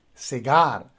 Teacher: so you see that the stress goes on the second syllable